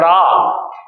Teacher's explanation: जब आप रा का उच्चारण करेंगे तो आप देखेंगे कि आपकी जीभ लगातार कंपन कर रही है, लुढ़क रही है। तो इसलिए रा को प्रकंपित भी कहते हैं, रा को लुंठित भी कहते हैं और रा को कंपन जात भी कहते हैं, जो कंपन से पैदा होता हो।